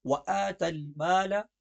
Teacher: مال کی لام بس درمیانی انداز میں، نہ موٹی نہ باریک